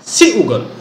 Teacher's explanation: Seugal, there is a glottal stop